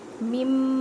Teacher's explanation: میم کو میم مشدد کے ساتھ ملائیں اور غنہ کریں